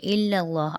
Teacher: اللہ کے نام کو موٹا پڑھیں گے کیونکہ اللہ کے نام سے پہلے زبر ہے